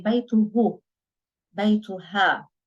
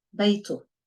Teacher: But his house, beitu, and her house, beita. Now the pronoun itself is the ha, which is not really vocalized in colloquial Lebanese. In standard Arabic, you would say beituhu, beituha. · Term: we silence it